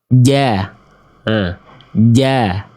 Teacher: Makhraj huruf jim wal wastu faji musyinu ya. Dia dilafalkan dari tengah lidah.